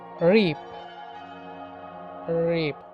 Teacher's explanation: Palato-alveolar, frictionless continuum, voiced. Palato-alveolar, blade of the tongue and teeth ridge are involved.